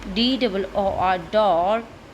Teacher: आर हमारा क्योंकि एंड में जो आर है उसको हम साइलेंट रखेंगे